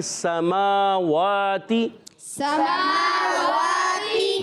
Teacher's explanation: سین پر زبر ہے، حرکت ہے، نہیں کھینچیں گے. میم پر کھڑا زبر، واو پر کھڑا زبر، دونوں کو ایک ایک الف کھینچیں گے. دیکھیں آواز آئے گی سماواتی.